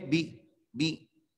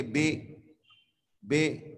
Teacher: अब इसको आप अगर मारूफ न पढ़ेंगे तो पढ़ेंगे बे बे, तो बे गलत है